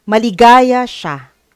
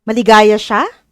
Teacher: tumaas ang tono sa dulong bahagi